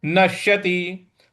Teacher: छिन्नाभ्रमिव नश्यति। नश्यति न के बाद जो श है उस पर भी हमको आघात देना है।